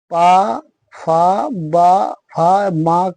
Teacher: इन वर्णों में दोनों ओंठ आपस में एक दूसरे से स्पर्श करते हैं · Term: ओष्ठ